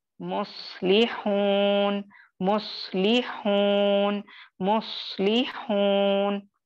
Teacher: सौद आप जानते हैं हेवी लेटर है, सौद पे साकिन है, उससे पहले मीम पर पेश है, तो आप इसको कैसे अदा करेंगे, मुस्लिहून, मुस्लिहून, मुस्लिहून, ठीक है। क्योंकि सौद साकिन है, इससे पहले दम्मा है, तो ये क्या हुआ, 3rd लेवल ऑफ तफखीम हुआ।